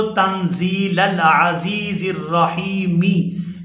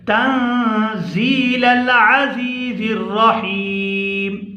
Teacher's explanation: یہاں ہم نے اس کے نیچے زیر نہیں پڑھنی کیونکہ ہم نے وقف کرنا ہے یہاں پر، تو ہم اس کو تنزیل العزیز الرحیمی اس طرح سے ہم اس کو نہیں پڑھیں گے۔ اگر ہم نے یہاں پر سانس ختم کرنا ہے، یہاں پر ہم نے رکنا ہے، تو میم کو ہم ساکن کر کے پڑھیں گے تنزیل العزیز الرحیم، لتنذر قوما ما انذر آباؤهم فهم غافلون۔